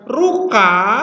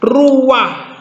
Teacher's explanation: Jadi kalau ada patah sebelum huruf tenggorokan, maka patahnya yang diucapkan dulu. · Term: furtif patah